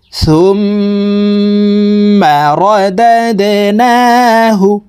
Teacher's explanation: তো হরকতের বামে মিমের উপরে তাসদিদ আছে, এই কারণে এই সা হরফ তাসদিদওয়ালা মিমের সাথে নাকের বাসি থেকে 3 সেকেন্ড পরিমাণ গুন্নাহ করে ধরে রেখে পড়তে হবে। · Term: ওয়াজিব গুন্নাহ